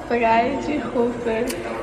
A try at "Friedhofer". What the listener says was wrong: Vou te falar, você complicou mais do que precisava. Friedhofer. Você nem fala o H é mudo.